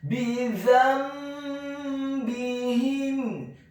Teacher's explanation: merubah gunnah huruf nun yang sukun menjadi gunnah huruf mim yang sukun sebelum membaca huruf ba yang kasrah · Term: iqlab